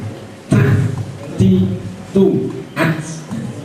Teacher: suaranya harus ditekan karena sifatnya adalah syidah syidah itu menekan suara jadi suara ditekan tapi nafasnya dikeluarkan · Keluarnya nafas. Jadi ketika membaca ta itu harus banyak nafas yang keluar. Ta, tidak ta, ti, tu, at. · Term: hames